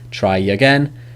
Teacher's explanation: Try is a long vowel, so it's a y linking.